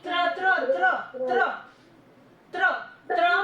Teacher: त्र में देखिए आपकी जो टंग है वो ऊपर वाला जो टीथ है उनके पीछे टच होगी